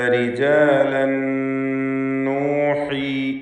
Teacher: റിജാലൻ എന്നതിലെ തൻവീനിന് ശേഷമുള്ള നൂനിൽ പൂർണ്ണമായും ലയിപ്പിച്ച് മണിക്കണം. ഇദ്ഗാം ബിഗുന്ന കാമിൽ.